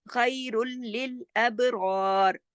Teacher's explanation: را جا کے لام میں ادغام کر رہا ہے لیکن غنہ نہیں ہو رہا. خیر للابرار، اب با پہ کلکلا ہوگا، اب ہلا کے پڑھیں گے ابرار.